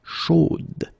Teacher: You will have to put this final e, chaude, okay, at the end, and then the pronunciation will change a little bit, chaude. So here you pronounce the final d, whereas in the masculine form you don't pronounce it.